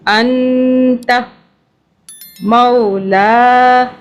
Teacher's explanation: نون جو ہے ساکن، اس کے آگے پھر تا کا حرف آ رہا ہے جو کہ اخفا کا ہے. نون پہ ہم نے اخفا کرنا ہے، نون کو چھپانا 2 سے 3 سیکنڈ کے لیے